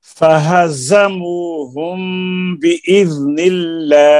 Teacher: फा हुरूफ शफवी है, यानी ज़बान नहीं, ये नीचे के होंठ का शिकम और स्नाउलिया का सिरा।